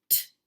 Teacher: Unvoiced. Is it stopping or continuous? T. Stopping.